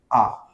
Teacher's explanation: याचा उच्चार स्थान काय आहे कंठ म्हणजे कंठातून उच्चार होतो